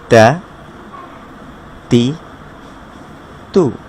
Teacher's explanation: জিহ্বার আগা উপরের দাঁতের গোড়ার সাথে।